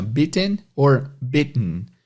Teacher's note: Esse T fica meio que parado na garganta